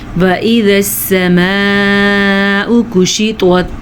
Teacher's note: کشطت میں بھی طوا کو پر پڑھیں گے